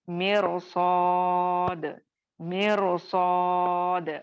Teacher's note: रॉ को मोटा कर देंगे सौद आने की वजह से